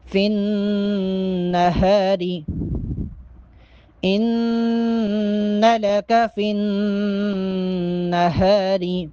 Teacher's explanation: فا کو جب نون کے ساتھ ملائیں گے تو یہاں پر بھی غنہ ہوگا۔